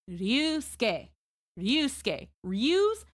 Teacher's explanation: So instead of saying Ryusuke and you sound like a gaijin, you would soften that R, slide into the U, soften that U, and use it to slide from S to the KE